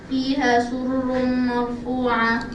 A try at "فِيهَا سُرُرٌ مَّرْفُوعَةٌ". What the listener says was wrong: We want you to make it much longer than that. It's good, but a little longer.